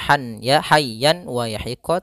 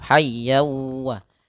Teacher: tanwinnya masuk kepada huruf wau